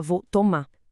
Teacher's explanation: a gente corta o R final dos verbos. Ninguém fala vou tomar, a gente fala vou tomar.